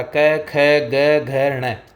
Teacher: ये तीनों की तीनों कंठ से निकलते हैं, कंठ से टकराकर इनकी ध्वनि निकलती है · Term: क वर्ग